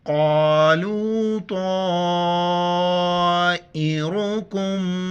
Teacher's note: را کے اوپر پیش ہے موٹا کر کے پڑھیں گے. کاف کو میم کے ساتھ ملاتے وقت غنہ کریں گے، میم کے اوپر شد ہے.